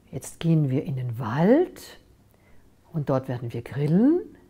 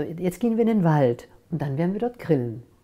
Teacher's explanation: senke die stimme am ende des satzes und ich gehe nicht nach oben mit der stimme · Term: stimme senke am ende